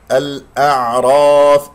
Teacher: الأعراف، هذا خطأ. الأعراف، الراء مفخمة، العين يجري فيها الصوت فترة زمنية بسيطة